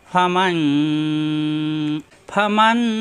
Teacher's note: নুনের উপরে সাকিন ইকফা গুন্না হবে , নুনের পরে শিন আসছে অর্থাৎ ইকফা গুন্না, অনুসার মধ্যে গুন্না